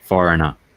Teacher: i put an a on the end of it instead of an ar